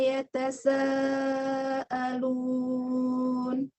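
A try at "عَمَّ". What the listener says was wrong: Gunah pada mim tasydidnya boleh lebih panjang lagi karena mim tasydid itu gunahnya masuk ke tingkatan gunah akmal, gunah yang pertama. Jadi panjangnya paling sempurna. Akmal itu artinya paling sempurna. Maka dengungnya dipanjangkan. Ditambah lagi dengungnya amma. Panjangkan lagi gunahnya.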